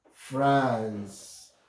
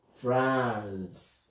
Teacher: If you look at the word France, our active vowel is ah, ah, and this is just a long vowel. Okay. Ah, ah, ah, France.